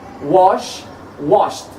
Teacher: I add the ed, is pronounced as t because the final sound is sh sound.